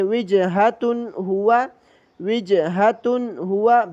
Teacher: جب بھی غننے والے لفظ کے بعد یہ آ جائیں تو غننے کو ختم کر دیتے ہیں۔ تا پر غنہ ہونا چاہیے تھا تنوین کی وجہ سے، لیکن ہا جو آ گیا اس کے بعد یہ حروف حلقی میں سے ہے، اس لیے اس نے غننے کو ختم کر دیا ہے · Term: بغیر غننے